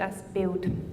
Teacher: in my own Swiss German dialect we will replace L with au so build which means picture in German I would pronounce it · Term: L vocalization